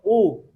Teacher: حمزہ کو حلق کے جو ہے نچلے حصے سے، یہ بالکل نرمی کے ساتھ ادا آتا ہے، اس کو پڑھیں گے او.